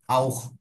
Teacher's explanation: তখন আমার C H এর উচ্চারণটা তখন আর সি এইচ এর মতো থাকবে না, তখন একটা খ এর মতো হয়ে যাবে।